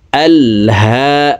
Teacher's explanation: হার উপরে খারা জবর আছে হাকে এক আলিফ টেনে পড়বো